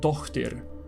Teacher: In the Old Swedish Dalecarlian law, whose legislator and origin is not fully known, there are some words that seem to show Proto-Norse velar fricative before t being preserved, with at least the word for daughter showing a consistent spelling with a cluster, and not a long t, which is the usual in North Germanic.